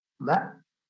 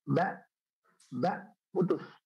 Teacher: Hamzah atau alif ya ataupun Hamzah itu dia ketika sukun dia suaranya berhenti total.